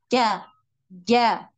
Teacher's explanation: lidah kita itu nempel ya betul-betul menempel di langit-langit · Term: huruf Jim